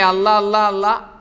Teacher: നാവ് പല്ലിൽ തട്ടിയിട്ടുള്ള ഒരു അള്ളാ